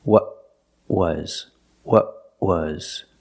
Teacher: the tongue stays down because I stop the air in my throat I tighten my throat to stop the air